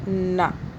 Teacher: نون کو نہیں کھینچا کیونکہ کسی کے ساتھ ہم نے جوڑا نہیں، تو اس کو یہیں پہ رکھیں گے۔